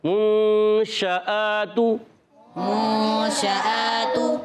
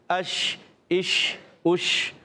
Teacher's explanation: تو شین جو ادا ہوتا ہے, شین وسط زبان وسط تعلق سے ادا ہوتا ہے. شین میں ایک صفت پائی جاتی ہے جس کا نام ہے تفشی. کیا نام ہے؟ تفشی. یعنی منہ میں آواز کا پھیلنا